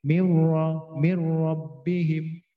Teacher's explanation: nun sukun bertemu ra itu tafkhim ra dibaca tafkhim